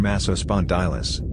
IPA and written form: ˌmæsoʊˈspɒndɪləs (Massospondylus)